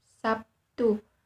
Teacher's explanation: pada kata Sabtu dalam bahasa Indonesia lazim diucapkan Sabtu dimana terlihat bunyi B berubah menjadi P sebagai akibat pengaruh bunyi teh yang dikenal dengan istilah asimilasi · bunyi hambat bersuara sedangkan bunyi teh merupakan bunyi hambat tak bersuara karena pengaruh bunyi t yang tak bersuara berubah menjadi Bunyi p yang juga tidak bersuara